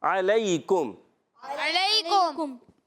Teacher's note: حلق کے درمیان والے حصے سے عین کو ادا کرنا ہے